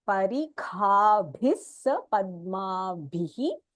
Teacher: So this kha, bhi, bhi. All the three are Mahapranaha, and because there is a visargaha here, there is a sakaraha that you add.